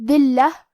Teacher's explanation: حرف اللام پہ تشدید ہے تو ہم دو حرف کے برابر حرف اللام کو پڑھیں گے